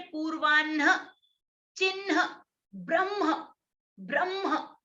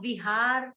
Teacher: ये जो संयुक्त हकार है उसका स्थान उरह स्थान है। और जो आप विहार, आराम से ह बोल रहे हैं, वो किसी के भी साथ संयुक्त नहीं है, वो असंयुक्त है, उसका स्थान कंठः, अकुह विसर्जनीयानाम कंठः।